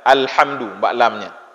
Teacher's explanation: huruf lam juga huruf yang keluar dari tepi lidah ya huruf lam lam Alhamdulillah alamnya terbaca sama-sama la la la